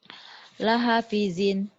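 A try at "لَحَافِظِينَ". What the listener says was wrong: Salah, hanya panjang. Ayo, lihat. Lahafizin.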